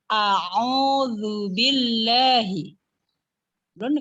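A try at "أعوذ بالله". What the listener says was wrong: kurang ainnya. Au.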